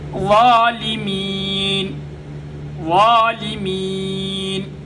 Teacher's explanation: اوپر والے دانتوں کے ساتھ زبان کے کناروں کو اور زبان کے سامنے والے حصے کو لگائیں گے, وا ادا ہوگی.